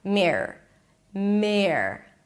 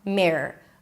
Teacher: Just pronounce it like one long R. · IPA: ˈmɪrər